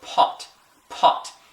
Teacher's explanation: going to feel some hot air hit your hand why because when we say letter P in English we breathe out as we're saying the P · stick it in front of your mouth and go pot pot when you say that P you're going to feel some hot air hit your hand why because when we say letter P in English we breathe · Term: aspirate